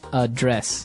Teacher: the verb address has the stress on the second syllable